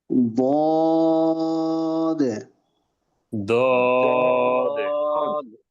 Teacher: জিহ্বার গোড়া, জিহ্বার গোড়ার কিনারা মাড়ির দাঁতের গোড়ার সাথে লাগবে, তাহলে দরটা ওই জায়গা থেকে উচ্চারণ হবে।